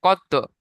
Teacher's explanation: কত বললে চেপে দিলে হবে না, জিভটা আবার ছেড়ে দিতে হবে সঙ্গে সঙ্গে। কত। কত মানে যে তোটা দুবার আসবে। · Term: কলকলা